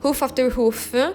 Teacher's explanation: this phrase begins with a trochee, so which is a stressed syllable followed by the unstressed syllable